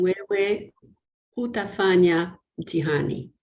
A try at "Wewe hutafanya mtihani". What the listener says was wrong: Okay, so on that, remember that you have to put intonation. Wewe hutafanya mtihani. You have to put like that intonation to show it's a negation.